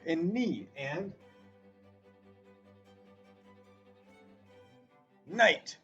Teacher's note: There's our KN, and it just makes an N sound.